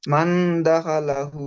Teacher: তানবিন ও নুন সাকিনের আওয়াজকে নাকে তুলে এক আলিফ পরিমাণ গুণনা সহ করতে হয়। মাশাআল্লাহ, একে খুব সুন্দর ইকফা বলে।